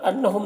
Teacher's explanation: نون مشدد غنہ کے ساتھ پڑھیں گے۔ ہم کے میم میں اظہار شفوی ہو رہا ہے، اسے جلد پڑھنا۔